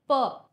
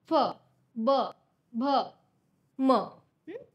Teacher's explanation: खालच्या व वरच्या ओठांचा उपयोग करून जे वर्ण आपण उच्चारतो त्यांना ओष्ठ्य वर्ण असं म्हणतात